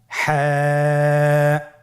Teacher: হা হরফটি উচ্চারিত হবে কন্ঠনালীর মধ্যখান হতে। গলা চিপে ধরে আপনি উচ্চারণ করুন।